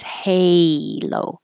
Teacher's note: this A is an A, like hey. So your tongue has to rise, halo. And the O, I put OU to remind you that it's not just a pure O, halo, halo, but starting with U and moving to O.